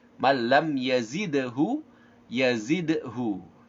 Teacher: mim ada sukun menandakan bahwa mim di sini tidak boleh dibaca dengung, nggak boleh kita baca wattaba'u man lam yazidhu.